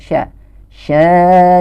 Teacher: Nah di sini ada hukum Mad Thobi'i yaitu ketika ada Fatah huruf berharokat fathah yang bertemu dengan alif nah ini dibacanya sepanjang dua harokat